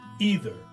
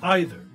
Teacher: Learners know the Americans use the uh e sound either and the Brits use the I sound either M but really both Americans and British use both ways